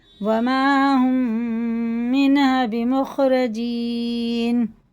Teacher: یہ میم ساکن میم ہے تو غنہ کریں گے